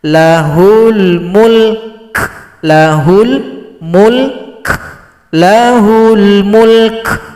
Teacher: berikan juga sifat huruf Kaf ada bunyi nafas atau bunyi angin disebut juga dengan sifat Hamas